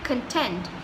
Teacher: when you say content, you're actually stressing on this part of the word, which is tent